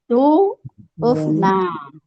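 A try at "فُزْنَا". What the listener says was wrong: Ibu bukan uf, tapi fu. Fuz. Fuz.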